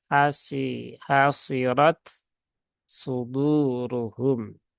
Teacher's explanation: tunaikan dulu syiddah dari ta kemudian hamsnya juga keluarkan kemudian ucapkan huruf Shad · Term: izhar